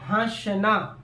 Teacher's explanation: अब जैसे हंसना लिखने हैं तो यह चंद्रबिंदु है इस वक्त जब आप बोल रहे होते हो हंसना तो नाक पे बाल पड़ता है मुंह से भी आवाज निकलते है तो मुख और नाक दोनों से उच्चारण हुआ ना ठीक है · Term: अनुनासिक